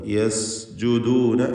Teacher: യസ് എന്ന് വ്യക്തമാക്കി, സഫീർ വ്യക്തമാക്കിക്കൊണ്ട് യസ്ജുദൂന എന്ന് ഉച്ചരിക്കണം